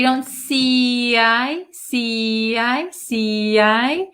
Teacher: this T is going to change to a flap T